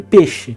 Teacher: Então, você prestar atenção, ele não fala na fala boa peixe, não é peixe. O I, praticamente, ele sumiu. Então, você só vê o som de peixe. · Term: monotongação